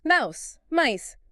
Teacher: Mouse becomes mice. It is another vowel change, but a big one. The owl sound becomes ice.